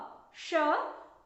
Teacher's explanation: आपकी जीभ जो है आपके तालू से टकराती है, इसलिए इसका नाम है तालव्य श।